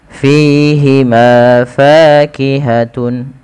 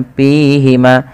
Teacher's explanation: fa memiliki salah satu sifat hamas yang dimana ketika melafalkannya harus mengalirkan nafasnya. Dan teman-teman tidak boleh menggunakan huruf P, ya, jangan dibaca dengan pihima.